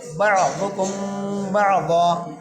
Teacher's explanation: ضاد کو موٹا پڑھیں گے، ضاد موٹے حروف میں سے ہے ، کم کے میم پر اخفا مع غنہ ہوگا کیونکہ میم